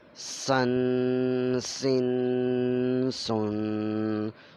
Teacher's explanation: ایک ہلکی سی سیٹی کی آواز آئے گی، پھر سین ادا ہوگا